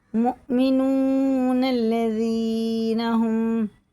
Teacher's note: اگر آیت نہیں کریں گے تو نون کو لام سے ملا کے پڑھیں گے، مؤمنون الذین ہم، لیکن آیت کر لی ہم نے تو اب یہ الف پڑھا جائے گا، الف خالی ہے۔